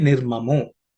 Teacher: Nirmamaha is the original word, but because of Sandhi, the Visarga has become O. Okay, so that's how you get Nirmamo.